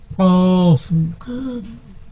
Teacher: ৪ নম্বর মাখরাজ। জিহ্বার গোড়া তার বরাবর উপরের তালুর সঙ্গে লাগাইয়া একটি হরফ উচ্চারিত হয়। ২ নুক্তাওয়ালা কফ।